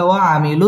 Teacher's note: تبعي منو مد تبعي أكلف টেনে পড়তে হবে ওয়াও ঠোঁট গোল করে উচ্চারণ করতে হবে